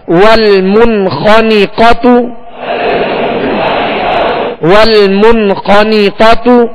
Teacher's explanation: اسی طرح تا پر پیش ہے، ہونٹوں کو گول کر کے معروف طریقے سے ادا کریں گے مگر یہ پیش بھی کھینچنے نہ پائے، دراز نہ ہو. · نون کے نیچے زیر ہے، بغیر کھینچے معروف طریقے سے ادا کریں گے آواز کو نیچے گرا کے. قاف پر زبر ہے، قاف حروف مستعلیہ میں سے، اس کو پر پڑھیں گے اور آواز منہ دونوں کھول کر ادا کریں گے.